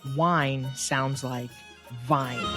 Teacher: hindi and punjabi speakers tend to substitute a sound similar to v for w to the english ear wine sounds like vine don't insert a